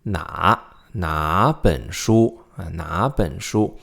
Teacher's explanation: which is 哪 本 书 哪 本 书 Notice how the tone on 哪 changes to a second because 本 is third, right? 2 third tones in a row, 哪 and 本 together, then 哪 will become a second tone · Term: Tone change